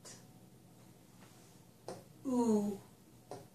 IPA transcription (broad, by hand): u